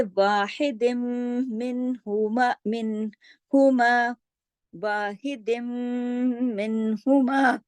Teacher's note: यरमलून में से जब नून और मीम आएगा तो इदगाम ताम होगा, बिल्कुल मुकम्मल गुन्ना होगा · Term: इदगाम ताम बिल गुन्ना